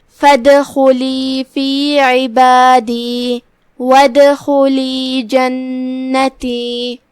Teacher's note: خا کی ادائیگی حلق کے اوپر والے حصے سے ہے تو ہم خا کو وہیں سے پڑھیں گے. · کلمت فادخلی جو کہ دال پہ جزم ہے، یہاں حکم ہے دال کا قلقلہ، لہذا دال کو ہلاتے ہوئے یہ کلمہ کو ادا کرنا ہے